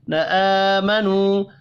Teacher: آمنوا کھڑی زبر اور واو مدہ دونوں ایک ایک الف کے برابر کھینچ کر پڑھے جائیں گے.